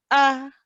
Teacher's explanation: the vocal cords are closed and they open all of a sudden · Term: hamza